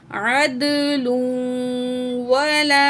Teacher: عین زبر دال، عد، لام 2 پیش واو، لوں، عدلوں، تو یہاں بھی ہم تنوین کے بعد واو ہے حروف یرملون میں سے تو ہم کیا کریں گے؟ ادغام مع غنہ کر کے پڑھیں گے۔ عدلوں ولا، الف مد ہے، 1 پوائنٹ کھینچیں گے۔